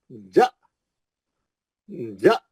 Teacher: हमजा साकिना झटके से पढ़ा जाता है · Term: हमजा साकिना का झटका